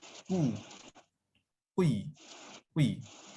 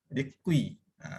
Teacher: baris depan kahwin dengan baris bawah, lahirlah anak yang sebutannya tengah-tengah antara dua baris tersebut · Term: ismamnya